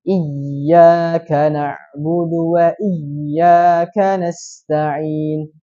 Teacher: Ini termasuk kesalahan jali karena dia menambah huruf. Yang benar adalah ya di tasydid. Jadi ditahan langsung ke ya-nya.